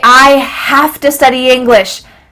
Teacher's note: Have to, here again, to changes to a.